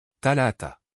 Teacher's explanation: Le son est produit en plaçant la pointe de la langue entre les dents supérieures et inférieures, avec un léger souffle d'air.